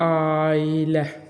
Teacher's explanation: y bitişdirici samiti əlavə olundu